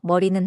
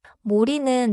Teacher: 모리는 단어가 아니지만 소리를 비교해봐요. 입술을 둥글게 하면 머리가 모리로 바뀌어요.